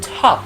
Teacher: that in top is aspirated when we say aspirated it is pronounced with the sound of a breath